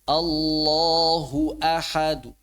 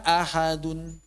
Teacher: maka suara yang dikeluarkan adalah harakat asalnya tanpa suara nun. Seperti tadi misalnya kata Allahu ahadun, maka yang dikeluarkan cuma tan ee cuma domahnya saja, tanwinnya tidak. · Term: raum